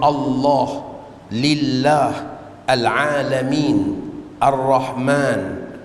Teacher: lafzul jalalah kalimah Allah dibaca dengan panjang dua harakat mad asli